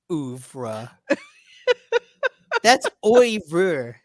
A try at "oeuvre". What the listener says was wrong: No, it's not ER. That's RE. VRE.